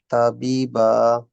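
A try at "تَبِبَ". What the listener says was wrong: বিতে টান হয়ে গেছে তা বিবা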